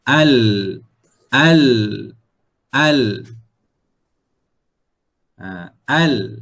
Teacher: makhraj Hai nah huruf lam dia punya Masnya adalah ujung lidah ujung lidah menyentuh bahagian tempat tumbuh gigi